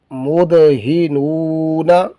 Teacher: یہاں پر حروف قلقلہ میں سے دال آیا ہے، قلقلہ بھی کریں گے، اور حروف مدہ میں سے واو آیا ہے، نون ساکن واو ساکن ہے، اس سے پہلے نون جو ہے وہ اس پر ضمہ ہے، تو واو ساکن ہو اس سے پہلے پیش ہو تو حروف مدہ میں سے ہوتا ہے.